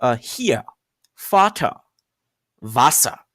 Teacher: You realize that R kind of gets replaced by an A sound. So it's like it's a silent R.